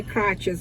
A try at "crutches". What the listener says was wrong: You're saying crutch, not crotch. Crutch. C-R-U-T-C-H. You made it sound very similar to the other one.